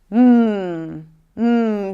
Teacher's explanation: Okay, moving on, because we have one more consonant here, and this is the M sound. So the air is stopped in the lips, but this is a nasal stop. So I stop the air here, and the air comes out through the nose.